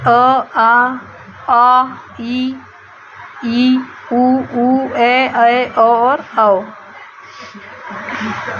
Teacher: वायु केवल मुख से निकलती है नाक से नहीं निकलती